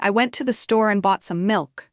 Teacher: the words store and milk would be stressed because they carry the meaning of the sentence. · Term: sentence stress